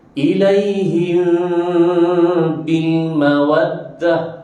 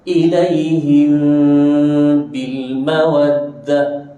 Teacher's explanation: Dengung yang ringan dan dua harakat.